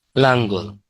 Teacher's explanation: দুইটা ল ছিল, একটা নাঙ্গল হয়ে গেছে। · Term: বিষমী ভবন